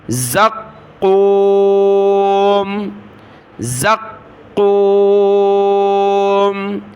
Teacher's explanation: کے ساتھ، شجر من زقوم، زا کو قاف کے ساتھ ملایا، قاف کو سخت کیا تشدید کی وجہ سے ، زا قاف زبر زق، قاف واو پیش قو، زقو، میم